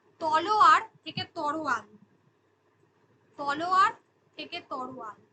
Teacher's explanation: শব্দের মধ্যে দুটো ব্যঞ্জনের পরস্পর পরিবর্তন ঘটেছে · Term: ধ্বনি বিপর্যয়